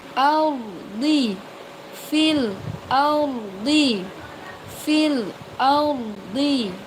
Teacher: Ro sukunnya dibaca tebal.